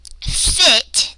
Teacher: this vowel, it's a lax vowel. My cheek muscles are not as engaged. They're more relaxed. And this sound is not in Spanish.